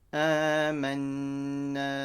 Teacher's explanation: it's a nun mushaddada ghunna